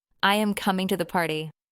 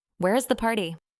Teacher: The pitch falls on party.